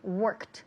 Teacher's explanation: el último sonido, ese ed, la d al final, se pronuncia como si fuera una t